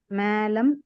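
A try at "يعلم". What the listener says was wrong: மா சொல்ல மேன் இழுத்துற கூடாது. மாலம் யாலம். ஐன் யாலம். அப்போ இது யாலம். யாலம்.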